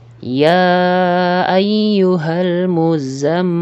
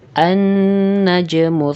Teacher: maka jika Hamzah ini terletak pada pertengahan ayat maka Hamzah ini tidak dibaca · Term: Hamzah washol